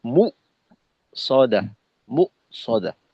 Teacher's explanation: মিমের পেশটা যেন ওকারের মতো উচ্চারিত না হয় , উ এর স্বর, হ্রস্বকারের স্বর যেন মো না হয়, মু